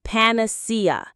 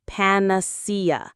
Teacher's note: The stress is on the third syllable, panacea.